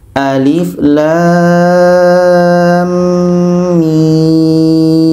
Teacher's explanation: La 6 harakat, di tengah-tengahnya dengung 2 harakat, setelah itu mim 6 harakat. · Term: mad lazim harfi mutsaqqal